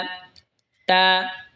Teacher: এরপর এটা হলো তা। তা জিহ্বার আগা সামনের ওপরের দুই দাঁতের গোড়ার সঙ্গে লাগা উচ্চারণ হবে তা।